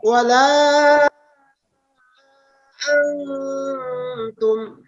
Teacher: Sudah Pak Guru. Ya, jadi nun sukun itu tidak boleh dibaca jelas ya. Jadi dia harus disamarkan ke huruf ta. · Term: ikhfa